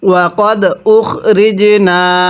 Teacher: এই জিমের মধ্যে আমরা ধাক্কা দিয়ে পড়ব, কারণ জিমটি হলো কলকলার হরফ, আর কলকলার হরফ হলো 5টি কফ, ত, বা, জিম, দাল।